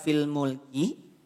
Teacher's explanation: maka pastikan kafnya ada percikan nafas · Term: hams